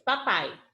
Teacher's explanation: na última sílaba o fonema vocálico que se destaca é o a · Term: vogal, semivogal